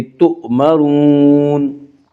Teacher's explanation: تو مرون نہیں پڑھیں گے، جھٹکے سے پڑھیں گے، تؤمرون۔ را کو پر پڑھا جائے گا، اس کا قاعدہ یہ ہے کہ را کے اوپر زبر اور پیش آئے تو را کو پر پڑھا جائے گا، را کے نیچے زیر آئے تو را کو باریک پڑھا جائے گا، را کے اوپر پیش ہے اس لیے را کو پر پڑھیں گے۔